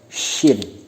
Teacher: Makharijul hurufnya bertempat pada tengah lidah renggang dengan langit-langit dan bibir terbuka